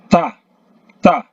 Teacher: Ta ini lidah menyentuh gigi bagian atas.